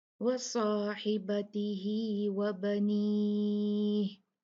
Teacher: साद हैवी होगा, उसको मुफक्कम मोटा पड़ा जाएगा।